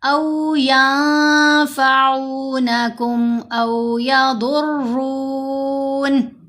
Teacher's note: ضاد کو بھی موٹا پڑھیں گے اور را کو بھی موٹا پڑھیں گے۔ ضاد حروف مستعلیہ میں سے ہے، یہ تو ہمیشہ ہی موٹا پڑھا جائے گا، لیکن را کو ہم کہاں موٹا پڑھتے ہیں؟